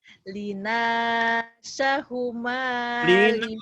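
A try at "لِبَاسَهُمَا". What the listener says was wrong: Bukan Lina itu titiknya di bawah. Liba ya jauh ya. Lina sama Liba. Cuma salah titik ya. Salah titik bunyinya jauh. Liba jangan Lina ya.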